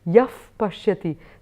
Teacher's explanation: if the visarga or the aspirated sound is followed by a pa, it becomes yaf pashyati